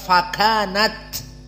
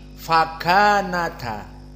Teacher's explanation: Hamzahnya dihapus, harokat fathah pindah ke tak. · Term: naql